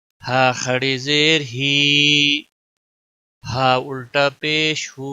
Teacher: انتہائی حلق یعنی سینے کی طرف سے سانس کو چھوڑتے ہوئے، دونوں ہا اور حمزہ کا مخرج